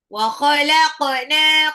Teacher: qofnya ee pantul karena dia adalah qalqalah